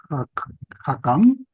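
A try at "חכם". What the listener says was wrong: Esta es suave porque no lleva dagesh. Entonces, jajam, jajam.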